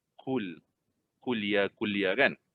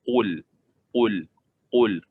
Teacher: Kalau kita terlalu ringan bila menyebut perkataan qul ni, dia akan jadi huruf kaf. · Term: huruf qaf